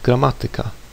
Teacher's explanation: I stress the syllable ma which is third from last and not the second from last. This word is an exception to the rule like others that end in ika and derive from Greek.